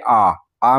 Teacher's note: हैं विवृत स्वर जिसमें मुख्य अधिक खुला हुआ हो जैसे आ आ में पूरा मुख खुलता है